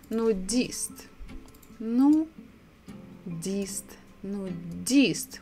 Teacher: We stress the last syllable.